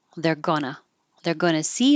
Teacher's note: I'm going to change going to to GNA